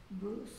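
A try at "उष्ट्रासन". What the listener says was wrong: It sounds like Bruce, but without the B, just U-S. Us. Ustrasana.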